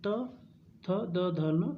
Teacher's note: जीभ कहाँ से लगेगी? ऊपर दांत से लगेगी, तो ये हो गया दंत